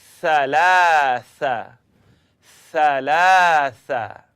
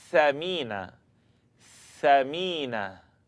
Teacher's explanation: all you're doing here is blowing the air between your tongue and the edge of the top teeth